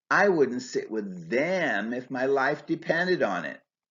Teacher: Stressing them emphasizes how much I dislike those people.